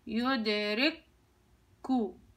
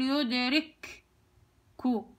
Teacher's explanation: أذهب لمخرج الكاف وأطلع له طلعة واحدة وألفظ الكاف الأولى والكاف الثانية، يدركو، يعني ما بقولش يدرككو. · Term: إدغام كامل